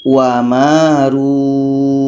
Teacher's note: Kita panjangkan dulu, baru kita matikan huruf yang terakhir. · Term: mad arid lis sukun